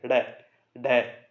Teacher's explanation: उत्क्षिप्त इसलिए कहते हैं क्योंकि जीभ मूर्धा से टकरा करके एकदम से लुढ़क कर नीचे गिरती है